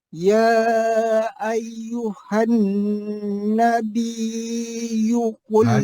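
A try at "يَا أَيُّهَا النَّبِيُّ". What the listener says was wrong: panjanglah biyu biyu hanabiyu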